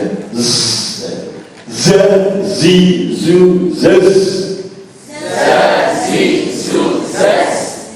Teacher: Huruf ini ada tambahan suara sofir, ya, yang berbeda-beda. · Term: huruf sofir